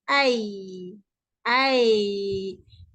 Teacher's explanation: ini di tengah lidah dan pertengahan di langit ai ai kita tak rapat kalau kita nak rapatkan dekat langit